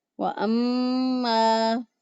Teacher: وَأَمَّا مَن بَخِلَ وَاسْتَغْنَىٰ وَأَمَّا میم مشدد پر ہمیشہ غنہ ہوتا ہے. ایک الف کے برابر غنہ کی آواز ناک میں ٹھہراتے ہوئے ادا کریں گے